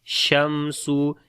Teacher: On the meme we make izhar shafawi. Sin again we make hums quality and whistling sound